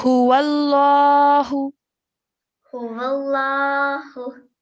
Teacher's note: straight away join the vowel to the lam. No staying in between, no lingering in your sound in between